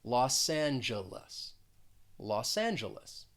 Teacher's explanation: in that second word the first syllable is stressed the g is going to sound more like a j and the second and third syllable have that uh that schwa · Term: schwa sound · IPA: lɔs ˈæn dʒə ləs